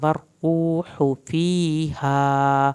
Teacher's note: یا ساکن کو کھینچنا ہے، ہا کو آپ نے لمبا کرنا ہے، الف اس کے ساتھ اٹیچ ہے۔